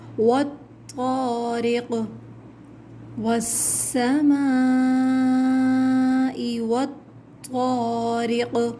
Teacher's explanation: طا موٹا حرف ہے، اس کو ہیوی لیٹر کو موٹا پڑھا جائے گا منہ بھر کر۔ قاف حروف قلقلہ ہے۔